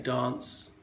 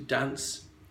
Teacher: dance is a fairly long a as opposed to dance which would be a northern English way to say it however a generation or two ago it would have been much